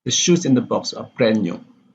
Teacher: So the stress is just on shoes and brand which are considered important.